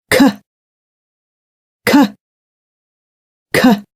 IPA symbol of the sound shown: k